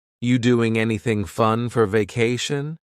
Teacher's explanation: Are you doing anything fun for vacation becomes, you doing anything fun for vacation?